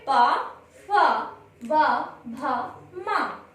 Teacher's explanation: इन 5 वर्ण जो वर्ण हैं इनका उच्चारण स्थान है ओष्ठ, क्योंकि जब इनका हम उच्चारण करते हैं तो उच्चारित करते समय हमारे ओठ आपस में मिलते हुए इन वर्णों का उच्चारण करते हैं। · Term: पा वर्ग